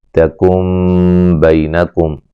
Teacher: یہاں نون ساکن کا اقلاب ہے، نون کو میم سے بدل کے پڑھیں گے